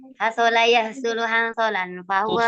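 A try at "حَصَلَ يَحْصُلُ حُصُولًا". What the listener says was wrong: Husulan. Kok ada nunnya? Kok ada nunnya? Loh, kok ada nunnya?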